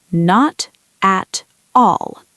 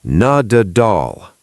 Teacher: The first T becomes a D.